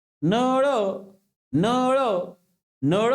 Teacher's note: नळ मधला जो काही न लहानवाला आहे तर त्याचा उच्चार करत असताना तुमची जीभ मूर्ध्याला लागत नाही. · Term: नळाचा न